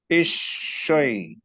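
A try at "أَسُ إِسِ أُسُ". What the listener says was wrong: isi. Ini mirip shin ngucapinnya. Harusnya lebih ke sin. desisnya desis sin ya, bukan shin. Aso, isi, usu, bukan asyo, bukan.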